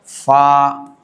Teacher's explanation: ثنایا علیا اوپر کے دانت کا کنارہ نیچے کے ہونٹ کی تری سے